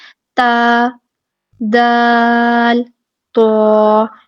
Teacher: ٹھیک ہے، مخرج ان کا کیا ہے کہ زبان کی نوک جب ثنایا الیاء کی جڑ سے لگتی ہے تو یہ تینوں حروف ادا ہوتے ہیں، بس طا کو پورا اور موٹا پڑا جاتا ہے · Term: حروف نتیہ